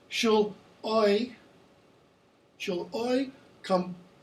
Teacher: Notice what's not being pronounced. There's no R.